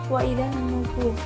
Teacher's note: alif lamnya ini tidak dibaca, langsung dimasukkan ke dalam nun. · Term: alif lam syamsiyah